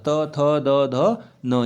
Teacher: त थ द ध न ये सब हमारे क्या है दंत वाले उच्चारण स्थान होंगे